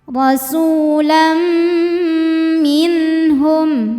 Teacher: Cara bacanya bunyi tanwin dileburkan ke mim, rasulam bunyi m sambil dengung tahan. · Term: idgham bi gunnah